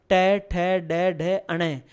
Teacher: आपकी जीभ मसूड़ों से टकराए तो ट वर्ग मूर्धन्य वर्ण, ट ठ ड ढ अण।